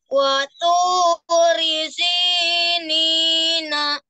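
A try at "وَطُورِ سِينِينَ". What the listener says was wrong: Ya, tuh ingat to ya. To itu diingat harus dirubah pelan-pelan ya, dilatih. Waturi sinina.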